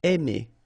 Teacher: when you combine A and I, then you get the sound E. Really open, E.